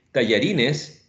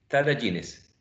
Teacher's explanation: metathesis, which is the inversion of sounds